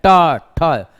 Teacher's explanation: देखिए मूर्धन्य वर्ण के उच्चारण में जिह्वा अंदर एकदम भाग है, जैसे ट ठ, जिह्वा घूम जाती है और जिन स्थल को स्पर्श करती है उसको हम मूर्धा कहते हैं